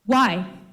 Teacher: I think raising her intonation at the word why in order to signal that he were asking the statement as a question.